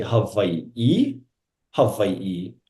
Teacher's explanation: Now, we pronounce oftentimes, not all the time, but oftentimes we pronounce W's as V's